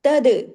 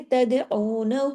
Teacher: دال پہ کلکلا ہوگا، کیوں؟ کتب جد کا لیٹر ہے اور جزم کے ساتھ ہے تو ہلا کے پڑھیں گے، جماؤں کے ساتھ نہیں پڑھیں گے اس کو۔